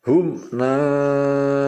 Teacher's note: Contoh hum naimuna, ditekan ya, hum. Nah, hum jangan sampai dengung, pokoknya ditekan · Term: izhar syafawi